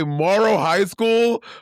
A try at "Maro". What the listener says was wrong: It's Maro, not Marorrow.